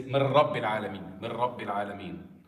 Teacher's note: the noon has been completely engulfed into the ra. Nothing is left from the noon. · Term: idgham without ghunna